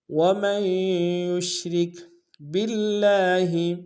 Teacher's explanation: یا کو شین کے ساتھ ملائیں گے، را کو کاف کے ساتھ ملائیں گے، را کو باریک ادا کریں گے